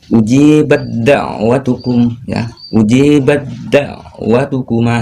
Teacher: Cara membacanya bad-da'wah, bukan dibaca bad-da'wah, tapi antara ba dengan dal. Suara ba langsung masuk ke huruf dal di sini. Jadi huruf tak sukunnya diliburkan.